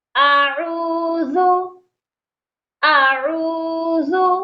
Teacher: حمزہ اور عین دو لیٹرز ہیں، دو حروف ہیں، اسی لیے دونوں کی آوازیں الگ الگ آنی چاہیے